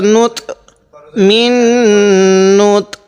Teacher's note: এই ত এর মধ্যে একটু ধাক্কা দিব কারণ ত টা হলো কলকলা হরফ